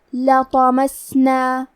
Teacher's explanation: کلمت لطمسنا میں لام پہ، تو پہ اور میم پہ تینوں پہ زبر ہے تو ہم یہ تینوں زبر کو برابر سے ادا کریں گے، اور حرف الطو حروف التفخیم میں سے ہے تو ہم یہ حرف کو بھاری آواز میں پڑھیں گے